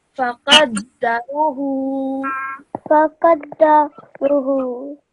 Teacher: because of the inverted dhamma, you have to pronounce that for 2 seconds